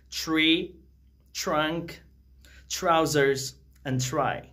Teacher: The first one starts with the combination of TR, okay? So whenever we have a combination like TR in any English word, that very T changes into CH sound.